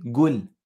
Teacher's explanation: If I were to say qul in Saudi Arabia or you know, the Emirates. They would say gul, not qul.